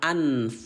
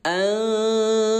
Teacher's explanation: samarkan dulu nun sukun ini atau nun yang baris mati sampai dengan dua ketukan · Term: bacaan samar